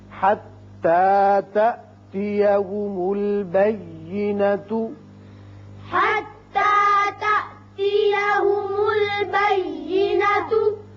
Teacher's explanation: حتى تأتيهم البينة. یہاں الف جو مجزوم ہے درمیانی یہ جھٹکے سے پڑھا جائے گا